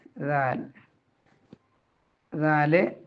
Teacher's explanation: നാവിൻറെ തുമ്പ് മേലെ മുൻപ് പല്ലിന്റെ അരിക് അരിക് എന്ന് പറഞ്ഞാൽ പല്ലിന്റെ അറ്റത്ത് ഏറ്റവും താഴ്ഭാഗത്ത് ദാ അങ്ങനെയാണ് അത് ദാലിന്റെ